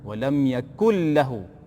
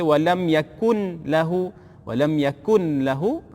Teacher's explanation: masukkan nun ke dalam huruf lam, hukumnya idgham bila gunnah.